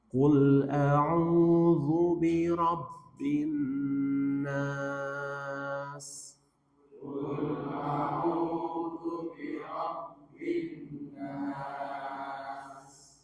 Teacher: Coba nunnya dihunnah lagi dan ditahan 2 harokat. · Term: gunnah